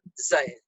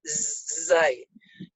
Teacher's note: Kalau zai gigi rapat, dia ada sifat safir, zai, seperti suara lebah. Kalau zai, gigi rapat, zai.